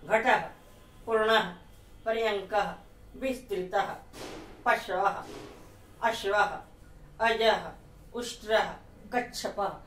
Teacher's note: विसर्ग का उच्चारण आधा ह होता है